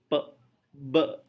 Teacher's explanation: Maka ketika kita melepaskan, ketika kita membuka kedua bibir, udara yang terkumpul di balik rongga mulut itu langsung keluar seperti meletus. Ya, maka disebut plosive.